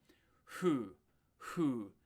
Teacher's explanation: The F sound in Japanese is like a strange mix of F and H.